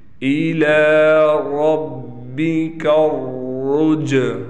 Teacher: الی ربک الرجعی، یہ عین ہے، عین پر کڑا زبر ہے لہٰذا اس عین کو ایک الف کے برابر کھینچیں گے